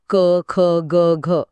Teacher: गळ्याच्या आतून येणारे ध्वनी म्हणजे कंठ्य